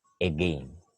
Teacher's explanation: When we pronounce again, we barely hear the beginning We just hear gain. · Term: schwa